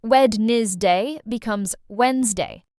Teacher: This word looks confusing because of the letters, but the sound is actually simple. We don't say the first D.